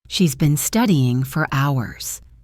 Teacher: Here for is unstressed. So it becomes for.